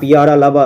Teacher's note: यरलव जब बोलते हैं तो इसमें उष्मा या फिर कहे तो आपके जो है श्वास वायु की मात्रा बहुत कम देखने को मिलती है। बोल के देखिए ना आप, यरलव तुरंत बोला जाता है। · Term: अल्प प्राण